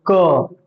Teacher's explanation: इसका उच्चारण करते समय मुंह से कम हवा निकल रहा है